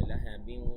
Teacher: মানে একটু নাকের ভেতরে যাবে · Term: গুন্না